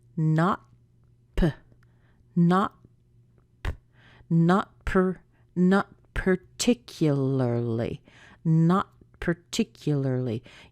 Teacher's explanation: the tea and at the same time start your piece so you're not going to need to push a lot of air out after the tea before you get to the pea put your tongue behind your teeth or right above it to